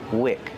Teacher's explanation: Wick not weak with a long e like green beans